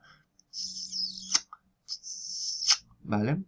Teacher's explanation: lo que estamos produciendo es una succión de aire el aire está entrando en la boca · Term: chasquidos